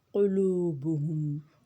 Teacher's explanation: وجلت، تا پہ ہمز کریں گے۔ قلوبہم، قاف اچھے سے نکالیں گے حلق سے۔ واو مدہ، واو ساکن سے پہلے پیش واو مدہ۔